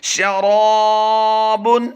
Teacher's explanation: الف ما قبل مفتوح ہو تو الف مدہ ہوتا ہے، یعنی الف سے پہلے حرف پر زبر ہو تو الف مدہ ہوتا ہے. تو شین کو لمبا نہیں کریں گے، را کو لمبا کر کے پڑھیں گے